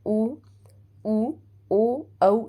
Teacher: वृत मुखी में होठों की बनावट क्या हो जाती है गोलाकार हो जाती है